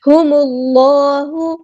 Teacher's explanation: اللہ کا جو لام ہے یہاں پہ موٹا کرنا ہے